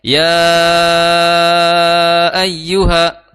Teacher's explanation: dibacanya empat atau lima harakat · Dibacanya 4 atau 5 harokat. Bukan dibaca 2. Kecuali kalau menggunakan torik atau jalur bacaan yang lain, paket bacaan yang lain, ya. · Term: Mad Jaiz, mad jaiz